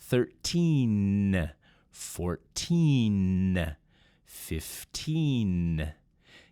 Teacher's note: That N sound is made by hitting the tongue up against the top teeth in your mouth.